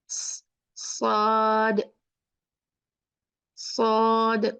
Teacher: जुबान नीचे नीचे के दो दांतों के पीछे पूरी जुबान पीछे से पूरी ऊपर उठे